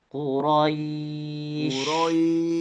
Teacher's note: Desisnya lebih ditekan sedikit supaya keluarnya agak lebih kencang maksimal.